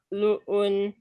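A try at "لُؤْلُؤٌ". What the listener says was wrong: Coba lebih monyong lagi di lu, luun.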